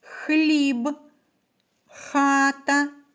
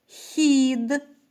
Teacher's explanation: звук х здебільшого вимовляється твердо хліб хат Іноді він вимовляється м'яко хід